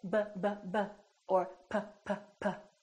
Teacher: I'm putting my lips together both my upper lip and my lower lip are working